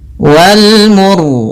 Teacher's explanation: kita baca dengan ra tebal disebabkan karena sebelum huruf ra yang disukunkan ada huruf yang dommah · Pada bacaan wal mursalati, di sini ini ada alif lam qamariyah, yaitu alif lam yang ditulis dan dibaca huruf lamnya dengan jelas, yaitu adanya huruf alif lam bertemu dengan mim. Kemudian ra-nya di sini kita baca dengan ra tebal disebabkan karena sebelum huruf ra yang disukunkan ada huruf yang dhammah